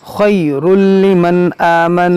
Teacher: یہاں پر ادغام ہوگا بغیر غنہ کے